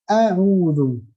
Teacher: A'udzu hamzahnya keluar dari bagian tenggorokan paling dalam